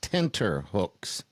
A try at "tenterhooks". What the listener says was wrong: Tenter hooks. Hooks. Anyway, tenter.